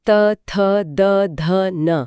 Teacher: त वर्ग का उच्चारण स्थान दंत, मतलब दांत है।